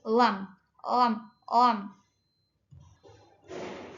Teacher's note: Lam itu masuknya ke bunyi sisi lidah antara kanan atau kiri · Lam itu maksud maksud masuknya ke ee apa ee bunyi sisi lidah antara kanan atau kiri. Mutawasit itu sedang ee majhur maksudnya ke bergetar dan murok tipis.